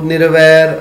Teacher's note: ਹੁਣ ਤੁਸੀਂ ਦੇਖੋ ਨਿਰਵੈਰ ਸ਼ਬਦ ਦੇ ਅਰਾਰੇ ਨੂੰ ਔਂਕੜ ਲੱਗੀ ਹੋਈ ਹੈ, ਪਰ ਪਾਠ ਨਹੀਂ ਕੀਤਾ ਜਾ ਰਿਹਾ